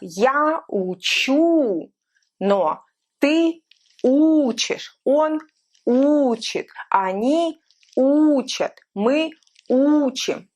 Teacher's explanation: So if we're looking at the verb учить, we will have я учу, но ты учишь, он учит, они учат, мы учим. So you see how the stress changed from учить and учу to учит and учат.